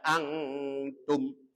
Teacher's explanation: Angtum itu ada nun sukun bertemu dengan ta. Hukumnya dibaca ikhfa. Ikhfa artinya samar atau tengah-tengah antara idhar dengan idgham